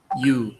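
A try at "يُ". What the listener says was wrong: Yu, lebih monyong. Lemahnya. Langsung aja, lemahnya. Yu.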